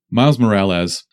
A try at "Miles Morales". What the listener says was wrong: Morales. You're saying it with a Z.